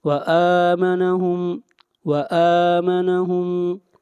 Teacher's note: حمزہ کے اوپر کھڑی زبر ہے، اس کو ایک الف کے برابر کھینچ کر پڑھیں گے۔ وآمنہم، وآمنہم، یہاں پر میم ساکن کے بعد میم آ رہا ہے تو یہاں پر ادغام ہوگا، میم کو میم کے ساتھ ملا دیں گے۔